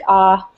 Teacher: I'm hearing long open O's that sound like ah